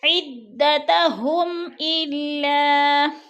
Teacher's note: میم ساکن کے بعد حمزہ حروف حلقی میں سے آ گیا تو ادھر اظہار شفوی ہو رہا ہے. غنہ نہیں کریں گے بلکہ لفظ کو ظاہر کر کے پڑھیں گے